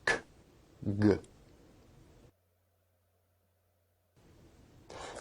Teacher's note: Velar sounds are produced at the velum or soft palate, such as k, g.